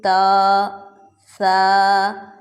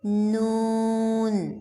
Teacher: جب ہم ان 2 لیٹرز کو ادا کرتے ہیں تو ہماری وائس نوز کی طرف سے ظاہر ہوتی ہے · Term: غنّہ لیٹرز